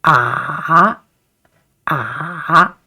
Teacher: third tone, it is like a curve, down and then uphill